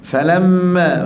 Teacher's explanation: lembut mim kita kena baca lembut juga tapi jangan lembut terus kita kena dengung dua harakat sebab mim itu ada sabdu